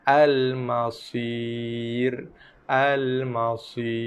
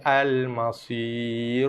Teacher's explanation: Maka sod aja yang tebal, ra dibaca dengan sifat nipis. Sebab ramai yang terbawa-bawa bacaan tebal pada sod pada huruf ra. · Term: ra nipis